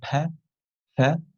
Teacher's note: we can see that there is no vibration there is no voice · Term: voiceless sounds